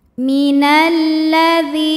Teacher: lam Kenapa huruf syamsiyahnya lam karena jika ada lam tasdid sebetulnya lam ini terdiri dari dua lam lam sukun dan lam fathah maka huruf syamsiyahnya lam cara bacanya dimasukkan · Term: alif lam syamsiyah